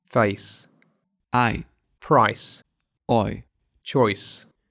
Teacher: Дифтонги первой группы сужающиеся, то есть они скользят от более открытого в закрытый звук. 3 дифтонга скользят в ненапряженный «и». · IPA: /eɪ/ /aɪ/ /ɔɪ/